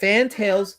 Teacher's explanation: With the A in fan and the E in tail. With a slight emphasis on the first syllable.